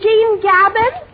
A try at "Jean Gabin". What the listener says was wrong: Oh, not Gabin. It's Jean Gabon. Yes, Jean Gabon. You pronounce it through the nose, you see.